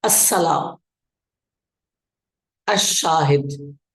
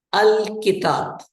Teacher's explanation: لام سائلنٹ ہو جاتا ہے، بلکہ اگلا لام کے بعد والا جو حرف ہوتا ہے اس پر تشدید آ جاتی ہے اور لام اسی میں مدغم ہو جاتا ہے، مکس ہو جاتا ہے، جیسے السلام، الشاہد۔